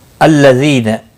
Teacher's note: ذی یا مدہ ہے، ایک الف کے برابر کھینچ کر پڑھیں گے، نہ کو کھینچنا نہیں.